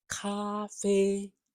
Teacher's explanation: So 咖啡 is first tone, very steady